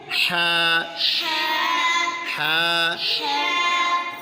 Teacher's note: اچھا پیارے بچوں، ہا کا جو مخرج ہے حلق کے درمیان والے حصے سے ہا کو ادا کرتے ہیں